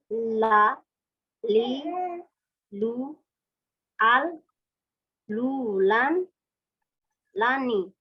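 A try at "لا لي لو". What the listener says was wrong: Ya, kayaknya udah itu.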